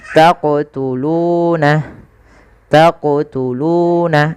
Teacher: Kemudian panjangkan lu dua harakat karena ia mad thabi'i.